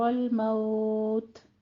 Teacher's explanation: تا پہ آپ نے وقف کیا ہے تو تا پہ ہمس بھی ساتھ کریں گے